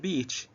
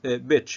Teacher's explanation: a lot of Arab speakers of English shorten this vowel and pronounce beach as bitch